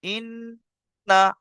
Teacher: নুনের উপর তাজদিদ আছে, গুণনা করা ওয়াজিব